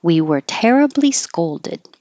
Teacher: Just don't make the final D, duh noise.